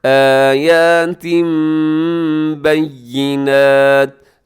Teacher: تنوین کو ہم میم کے ساتھ بدل دیتے ہیں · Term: اقلاب